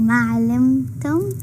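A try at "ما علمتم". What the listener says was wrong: It still sounds like you're putting a shadda on. Alimtum, Baba.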